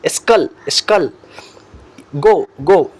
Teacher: Soft palate means upper part of the mouth. Soft palate is the passive articulator and the back of the tongue is the active articulator. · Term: velar sound